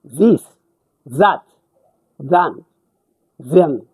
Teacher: group 9-11 this ይሄ voiced ናቸው እነዚህ this that than them ምንላቸው voiced ማለት ዝ የሚል ድምጽ አላቸው።